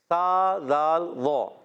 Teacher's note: और ज़ातिल बुरूज, ज़ाल की अदायगी क्लियर रखनी है। ज़ाल का मखरज है ज़बान का सिरा, ऊपर के दांतों के अंदरूनी किनारे।